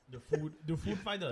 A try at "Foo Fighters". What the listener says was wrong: You put the emphasis on the wrong syllable. Ladies and gentlemen, the Foo Fighters.